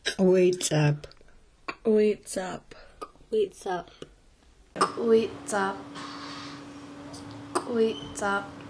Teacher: A Q with an apostrophe is called an ejective Q. It's just like the Q in the back of your throat, but it's ejected out of the mouth with a strong pop.